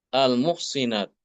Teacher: Di sini Imam Al-Kisai dia mengkasrahkan huruf shad. Bukan dibaca almuhsonat tapi almuhsinat.